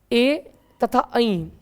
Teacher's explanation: कंठ और तालु से उच्चारित होते हैं। कंठ तालब भी कहेंगे इनको, कंठ प्लस तालु दोनों आवश्यकता होती है इनको उच्चारित करने के लिए, तो कंठ तालब भी होते हैं ये स्वर।